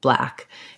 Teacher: typically a cluster like black or blue um it's going to be like a light l so what you're going to want is just the same l